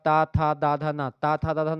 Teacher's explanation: ता था दा धा न ता था द धा ना ये सब दांत से बोले जाते हैं ठीक है ना ना बोलेंगे तो आपकी जीभ जाकर के दांत